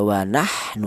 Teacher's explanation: huruf ha ini keluarnya berasal di tengah tenggorokan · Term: idhar